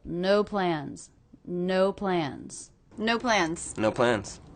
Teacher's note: Nothing reduces in this phrase. I'm really hearing this as two different stressed words. They're both one syllable.